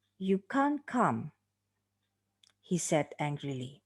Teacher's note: you can see that the significant fall is on the word come and the connecting passage he said angrily will be treated as the tail · come is pronounced with the significant fall on the word calm he said angrily is given no stress and is just following the intonation · this connecting passage will be more or less weekly stress and the intonation of this passage follows the same direction as the last stress of the dialogue itself in this case the one that occurs on the word calm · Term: falling intonation